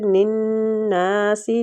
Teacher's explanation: نون مشدد پہ غنہ اور نون کو کھینچیں گے بھی الف مد ہو رہا ہے